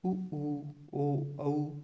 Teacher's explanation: इनका उच्चारण ओष्ठ की सहायता से होता है। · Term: ओष्ठ्य स्वर